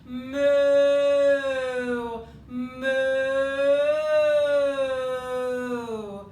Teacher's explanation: it brings the back of the tongue high and brings the lips forward into some rounding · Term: ooh